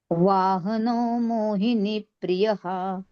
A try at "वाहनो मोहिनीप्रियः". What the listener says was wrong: आता मोहिनी करायच दीर्घ आहे ना